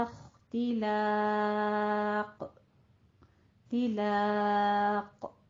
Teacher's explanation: آگے لا، لام الف لا باریک رہے گا، قوف کو پر کر دینا ہے، اور قوف کے اوپر بھی جب ہم جزم دینے لگے ہیں تو ہم نے اس پر قلقلہ کرنا ہے. ان هذا الا اختلاق، تلاق، ٹھیک ہے، تھوڑا سا قلقلہ کرنا ہے.